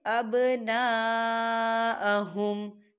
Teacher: یہاں دیکھیں ابنا خالی الف سے پہلے زبر ہے، اس میں مد بھی ہے، تو ہم اسے 4 حرکت کے برابر کھینچیں گے